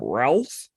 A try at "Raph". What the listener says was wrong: There's no L in Raph. No, it's Raph. It's Raphael, so it's Raph.